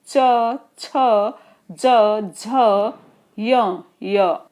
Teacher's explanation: जहां तालु खत्म हो रहा है उस पर जाके जिह्वा स्पर्श करती है। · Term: तलव्य व्यंजन